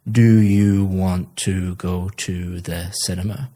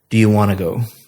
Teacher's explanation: Want to go sounds like one word, want to go, because you're connecting all the speech up. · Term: connected speech